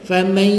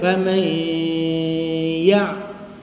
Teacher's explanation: Masuk rumah ya kan 100% serta gunnah nun dibaca separuh di dalam rumah ya. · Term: idgham naqis ma'al gunnah